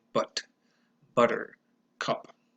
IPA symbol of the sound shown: ʌ